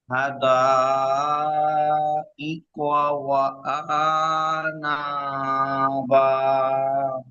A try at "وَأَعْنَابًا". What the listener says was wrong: হুম, ওয়া আ টান দিলে হবে না। ওয়া আ আনা বা, হামজা আইন জবর আ।